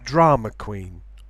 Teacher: there can be no intrusive r between drama and queen because queen begins with a consonant